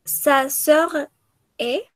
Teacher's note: pronunciamos la S con la que termina y la S con la que se empieza como si fueran una sola